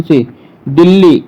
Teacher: यहाँ पे दो व्यंजन एक साथ, ला और ला, दोनों व्यंजन का प्रयोग एक साथ हुआ है, तो ये द्वित व्यंजन कहलाता है।